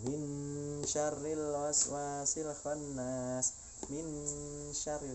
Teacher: Jadi nonnya itu menjadi apa ya, bercampur, disamarkan dengan bunyi shin, disamarkan dengan bunyi huruf sesudahnya. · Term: ikhfa